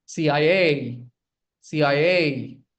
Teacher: Again, put the stress on the last letter.